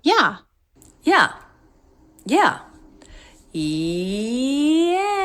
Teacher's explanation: Up, down, shape of stress. Very quickly, said very quickly, but you still feel the shape.